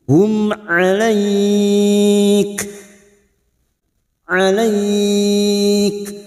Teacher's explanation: mim sukun bertemu Ain mim sukun dibaca jelas tanpa mendengung Hum huruf Ain Jangan samakan dengan Hamzah huruf Ain yang memiliki